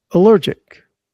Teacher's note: Stress on the second syllable, allergic.